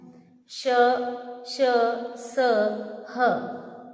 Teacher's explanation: ऊष्म व्यंजन का उच्चारण करते समय हवा मुख में रगड़ खाकर निकलती है, जिसके कारण बाहर आने वाली हवा गर्म होती है।